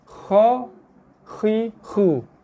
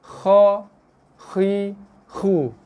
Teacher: Kita punya leher, pangkal leher kita yang buat kerja untuk keluarkan bunyi kha. Makhraj dia kat sini.